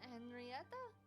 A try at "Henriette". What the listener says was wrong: Henriette, no A.